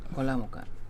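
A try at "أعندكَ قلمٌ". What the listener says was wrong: mana, enggak ada ka-nya di situ.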